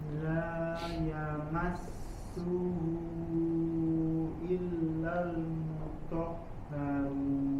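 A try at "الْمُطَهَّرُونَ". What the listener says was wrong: Nah, sama huruf haknya Dok, dilatih dari pangkal tenggorokan mutahharun. Belum kena makhrajnya.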